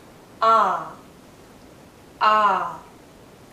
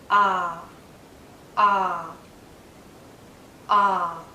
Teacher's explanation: it's a very open sound as well my lips are relaxed but my mouth is in a very open position my tongue is low inside my mouth low in a bit